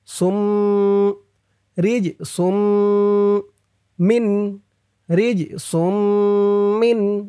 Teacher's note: সিন দিয়ে এই তাসদিদ ওয়ালা মিমকে ধরবে, ঈদগামে বা গুন্নাহ হবে।